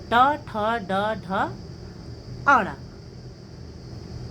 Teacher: इसी प्रकार से तीसरा है ऋटु रसाणाम मूर्धा ऋ टू का मतलब हुआ स्पर्श व्यंजन में ट वर्ग ट ठ ड ढ ण और र वर्ण श यानी मूर्धन्य श राणा मूर्धा यानी मूर्धा से इनका उच्चारण होता है